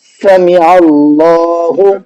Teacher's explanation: اللہ کے نام سے پہلے عین پر زبر ہے تو ہم نے اس کو منہ بھر کے پڑھا ہے